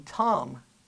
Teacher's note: One of them is nasal. If you were to crop out the vowel in Tom, you will notice that there is a nasal quality to it. And that's because it's in a particular environment.